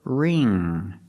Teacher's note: And the ng makes the nasal sound. There's no g sound. It's not ring.